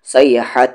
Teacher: حا یہاں پر middle throat سے